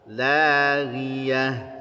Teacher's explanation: Ghaid punya sifat isti'ala tapi tidak punya sifat itbaq, maka cukup laghiyah, jangan lawiyah, bukan laghiyah ya.